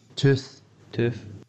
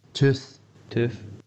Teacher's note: what you'll hear is the word tooth spoken by two people the older man says tooth and the younger man says tooth with a f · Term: f for